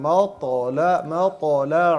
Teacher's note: त को मोटा करना है मीम को बारीक ही पढ़ना है